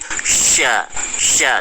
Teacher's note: lidah bagian tengah itu dinaikkan ke langit-langit